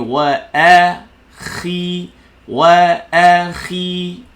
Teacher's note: Dia bunyi khi, bukan bunyi khoy, bukan bunyi khui, bukan.